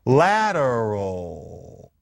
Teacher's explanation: the L at the end of lateral, the way we really say it is actually pretty much a vowel. It's lateral. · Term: alophones of L